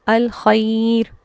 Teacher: ہم یہ نہیں دیکھیں گے کہ زبر ہے تو را پر ہو جائے گی، بلکہ ہم دیکھیں گے کہ اگر را ساکن ماقبل یا ساکن آ رہا ہے تو اب ساؤنڈ جو ہے وہ باریک ہو جائے گی